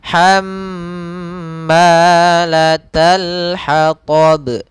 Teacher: Mim bertasydid hukum tajwidnya yaitu gunnah. Gunnah yaitu dia membacanya ditahan nya. Jadi begini, hamma tidak langsung hammalata tapi ditahan dulu nya 2 harakat.